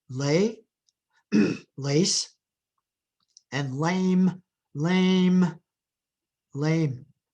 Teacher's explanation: if you pronounce that without nasalizing it it would sound strange but it would not change the meanings of the words